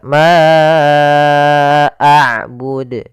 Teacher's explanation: Suara manya dipanjangkan sepanjang empat harakat. Mad jaiz munfasil terjadi sebagaimana tadi la yaitu adanya hamzah yang datang setelah huruf mad.